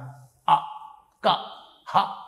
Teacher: అకుహ విసర్జనీయానాం కంఠః అ క హ ఇక్కడి నుంచి పలకాలి విసర్గ కూడా ఇక్కడి నుంచి అందువల్ల క అంటే ఇక్కడ నుంచి పలకాలి అలాగే